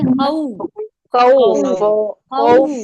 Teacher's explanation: दोनों होठ गोल होंगे मिलेंगे नहीं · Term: वाव की आवाज